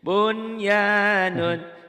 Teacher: Nah, apabila nun mati atau tanwin ketemu yan dan ya dan yanmu huruf yang 4 itu salah satu dari yang 4 itu maka dibaca idgham bigunah. Tetapi dalam hukum tajwid kalau nyambung begini satu kata satu kalimat ini tidak dibaca idgham tetapi harus dibaca idhar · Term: idhar mutlak